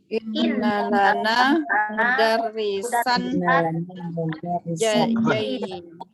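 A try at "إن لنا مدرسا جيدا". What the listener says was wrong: Salah baca barusan. Bukan jadid tapi jayyidun kan namanya. Inna lana mudarrisan jayyidan.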